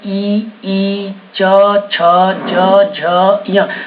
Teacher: जब भी आप बोल रहे तो आपका जो जीभ है वो तालु में चिपक रहा होगा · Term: तालव्य